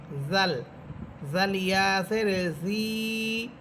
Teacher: জিব্বার আগা সামনের উপরের দুই দাঁতের আগার সাথে লাগবে